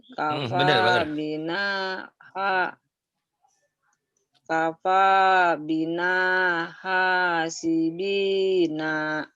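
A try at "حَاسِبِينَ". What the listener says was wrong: Nanya pendek Bu. Hasibina. Pendek nanya. Hentak aja Bu. Ayo Bu, dihentak. Ujungnya pendek.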